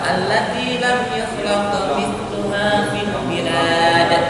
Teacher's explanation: huruf qaf itu harus dipantulkan tapi tidak kuat.